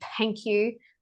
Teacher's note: my THs, instead of being in between the teeth, they're behind my teeth. Like when I say thank you, I say thank you, and really kind of push the TH sound.